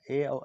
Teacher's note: कंठ और तालु दोनों से मिलकर बनता है, ए और ऐ होते हैं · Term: कंठ तालव्य